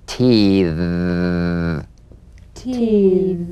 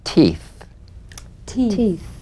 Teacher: The Voice th as in te te the unvoiced th as in teeth teeth teeth